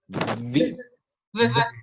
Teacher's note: Labiodental, fricative, but in this case is voiced. So there is a vibration.